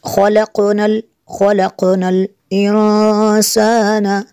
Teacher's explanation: نون ساکن کے بعد سین حروف اخفا میں سے یہاں پہ اخفا ہوگا، اس لیے یہاں پہ غنہ کریں گے